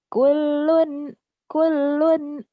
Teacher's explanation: Lam itu jangan ditahan ya. Yang boleh ditahan mim dan nun bertasdid